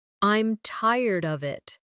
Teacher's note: with of sounding almost like uhv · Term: weak forms